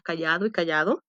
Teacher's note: la desaparición de la diferencia fonológica entre la consonante lateral palatal y la fricativa palatal sonora, de manera que en la pronunciación no se distinguen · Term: yeísmo